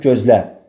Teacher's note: Bir var gözləmək feili kimi düşünsəm, gözlə. Burada vurğu sona düşür.